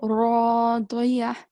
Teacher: Ra is going to be thick. Okay, because it has fatha.